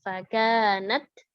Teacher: Keluarin dulu hamsnya baru ke huruf berikutnya. Karena izhar dia.